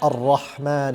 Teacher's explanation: Also, in regards to your pronunciation of the letter Ra, Ra has a quality known as takrar, which is where it vibrates slightly.